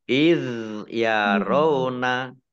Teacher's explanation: zal sukun ini bukan kolkolah, jadi tidak dimantulkan ya. Iz yarona, tidak id yarona, ya salah.